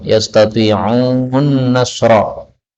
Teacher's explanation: nun ketemu nun boleh idgham yastati'un nasra